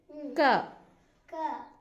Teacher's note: ಅಂದ್ರೆ ಕಡಿಮೆ ಉಸರು ತಗೊಂಡು ಹೇಳುವಂತದ್ದು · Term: ಅಲ್ಪ ಪ್ರಾಣ